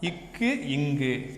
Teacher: இவ்விரு மெய்களும் நாவின் முதல் பகுதியும் அன்னத்தை தொடுவதால் தோன்றுகிறது